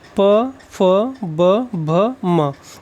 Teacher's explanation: ओष्ठ का प्रयोग करते हुए पा वर्ग को बोलते हैं